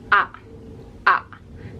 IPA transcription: ʌ